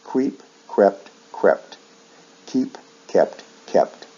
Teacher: Verbs like keep shift vowel sounds in the past and past participle, usually from long E to short E